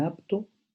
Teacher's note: En la articulación de P, en apto, solo se dan la implosión y la oclusión, sin llegar a ocurrir nunca la explosión que queda suprimida por la T que sigue, que es también oclusiva.